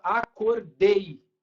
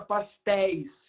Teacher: é uma vogal e uma semivogal se encostando tá por isso chama ditongo aberto por causa do som é